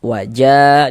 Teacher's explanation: waja dipanjangkan dua harakat pada thabi'i